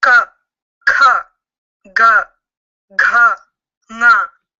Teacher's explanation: It shows the velar sounds that are generating from the back of the throat.